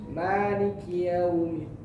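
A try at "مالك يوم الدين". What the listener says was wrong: Huruf lam maliki, bukan maliki kayak hampir mau huruf ra. Yang tadi huruf lam Maliki ya.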